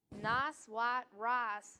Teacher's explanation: make sure you're incorporating both parts of this diphthong to properly form the i sound